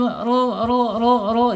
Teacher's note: Rnya tebal ya. Jangan lupa rnya tebal karena apa? Karena rnya harakatnya domah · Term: ro